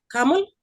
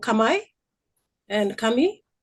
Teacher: Finally the L vocalizes to um the I sound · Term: vocalization